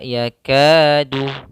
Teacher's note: maka pada kata ini ini ada hukum tajwid yaitu mad thi'i mad thii yaitu Mad yang panjangnya asli dua harakat